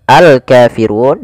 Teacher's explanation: alif lam yang ditulis dan dibaca lamnya dengan jelas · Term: alif lam qamariah